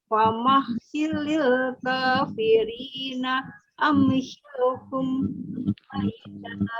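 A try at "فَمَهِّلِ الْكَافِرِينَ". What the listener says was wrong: Jangan dikasih jeda Bu ya.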